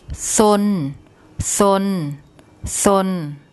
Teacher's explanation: so it's live and if you look at the tone rule for a low class initial consonant and a live syllable it gives a mid tone